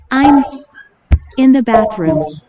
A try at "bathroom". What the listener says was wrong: 베드룸이 아니고 bathroom이라 해야 돼. bathroom. th는 혀를 물어야지.